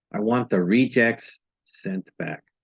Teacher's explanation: the first syllable of the word reject is stressed when it is used as a noun, not a verb.